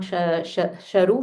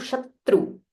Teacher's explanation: Stress on this tr, it is not sharu, Shatru.